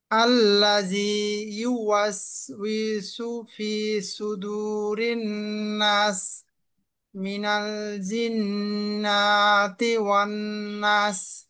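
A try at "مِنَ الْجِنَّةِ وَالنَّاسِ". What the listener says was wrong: নুনে টান হবে না, মিনাল জিন্নাতি ওয়ান নাস।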